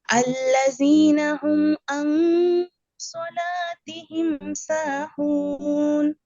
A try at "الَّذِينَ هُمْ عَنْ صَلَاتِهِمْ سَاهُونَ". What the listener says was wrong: আপু, আপনার আইনের উচ্চারণগুলো ক্লিয়ার হয় নাই, যেমন আউযু এখানে, তারপরে আল্লাযীনা হুম আন সালাতিহিম, কেমন? আইনের উচ্চারণগুলো খেয়াল করতে হবে। সুন্দর হয়েছে মাশাআল্লাহ, শুধু আইনের উচ্চারণগুলো আলোচনা করতে হবে।